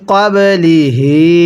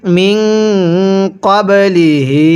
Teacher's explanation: হায়ে জমিরের মধ্যে এক আলিফ টেনে পড়ব।